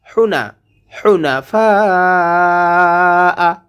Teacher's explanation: হু কণ্ঠনালীর মাঝখান থেকে উচ্চারণ করতে হবে, হু চিকন করে।